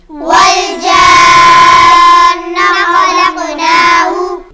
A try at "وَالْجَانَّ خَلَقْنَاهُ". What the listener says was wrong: غنّے کو تھوڑا سا لمبا کریں، تھوڑا سا لمبا کریں،